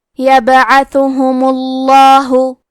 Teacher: کیونکہ آخری میں میم پہ پیش ہے، لہذا لفظ الجلالہ کے لام کا حکم ہے تفخیم، تو ہم حرف اللام کو موٹی آواز میں پڑھیں گے